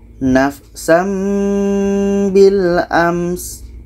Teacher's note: sin ini sifatnya hamas, maka ada anginnya